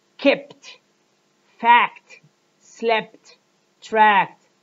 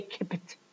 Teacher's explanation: each other or when a stop sound follows another stop sound the closure of the speech organs for the second sound for the second stop sound is made during the closure of the first stop sound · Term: one explosion